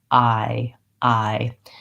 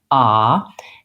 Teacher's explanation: I start with a vowel that's open and my tongue is down, and then I close and relax. I. The error that I will hear sometimes on words with the I diphthong vowel, is that people will just do the first part, ah, and they won't close and they won't hold that long enough.